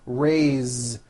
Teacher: even though it is spelled with an S, it's pronounced with a voiced Z.